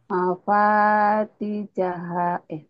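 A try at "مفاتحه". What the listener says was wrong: Mambati jaha. Orang nggak ada titiknya ya. Mafatihahu. Ini latihan ha sama ha. Mafatihahu. Hahu. Hahu. Ini desah. Ini enggak.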